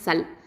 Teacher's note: லாம் அப்படிங்கிறது ஹஃபத்துல் லிசான் எழுத்து. லாம் வந்து தவசுத்த டைமிங் கொடுங்க சுகோன் இருக்கிறதுனால.